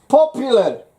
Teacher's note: Stress is on the pop.